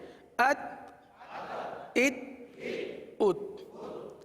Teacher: اس حرف میں، حرف تا میں قلقلہ نہیں ہوگا. آواز کو جما کر پڑھیں.